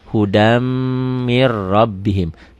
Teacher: ditulisnya ada n-nya dibacanya n-nya hilang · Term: idgham